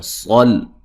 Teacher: صاد کو موٹا ادا کریں گے، لام کو ہلانا نہیں ہے